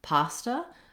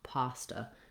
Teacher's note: The first syllable, pa, has the clear vowel ah, and then the second A sounds like it's an unstressed schwa, pasta. So I've rewritten that here for you with the letters UH to represent the schwa sound, and letters AH to represent the ah sound.